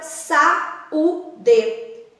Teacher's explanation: Esse A e o U, eles têm a mesma intensidade.